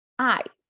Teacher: you can see the pronunciation i and it's a falling tone i